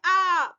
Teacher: यहाँ विपरीत है मीन्स पूरा खुला हुआ मुंह है। आवृत्तामुखी है मीन्स होठ जो है यहाँ पर गोल नहीं हो रहे हैं।